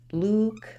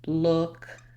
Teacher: contrast between the /u/ that's tense and the ʊ that's lax